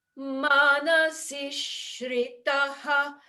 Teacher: The C is short, but then there's a double consonant in shritaha.